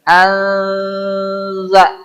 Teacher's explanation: Ini mah hampir-hampir huruf N tidak berubah huruf N disimpan di ujung lidah dengan gigi seri atas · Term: ikhfa